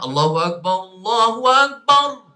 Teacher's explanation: ra tafkhimur ra. Jadi ra sukun ketika waqaf perlu ditebalkan.